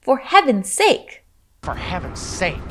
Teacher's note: the z sound at the end of heavens is actually dropped. So it sounds more like heaven's sake.